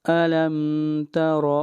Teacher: را کو موٹا پڑھیں گے اور را کے اوپر زبر ہے